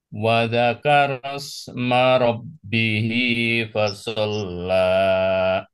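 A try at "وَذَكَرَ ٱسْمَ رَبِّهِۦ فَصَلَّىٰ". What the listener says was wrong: Hati-hati la-nya kepanjangan. La.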